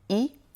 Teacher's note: essayez de garder en mémoire que « il » est très souvent prononcé « i » à l'oral